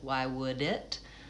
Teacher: the D is going to be released and I'm going to hear the D because the next word is a vowel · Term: linking